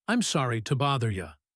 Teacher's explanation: The word to became ta, and you became ya. When gave directions, she said, take that escalator over there.